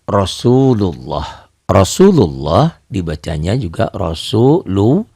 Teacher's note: Lafaz Allah dibaca tabkhim atau dibaca tebal, berbunyi Allah, seakan-akan ada W-nya di sini ya, tapi W-nya jangan tertahan, jangan monyong. Allah seperti berbunyi O. Ini terjadi bila lafaz Allah itu didahului oleh huruf yang berbaris fathah atau dhammah.